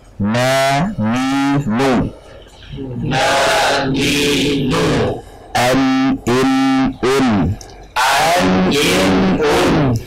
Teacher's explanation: Hanya saja gunnahnya adalah pokok gunnah, aslul gunnah, tidak panjang. Gunnah itu tidak panjang.